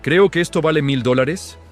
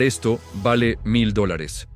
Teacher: El tono descendente, por el contrario, indica una afirmación, una verdad que no requiere que nadie esté de acuerdo para ser cierta.